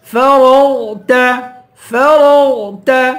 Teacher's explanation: غین اور را دونوں کو پر پڑھیں گے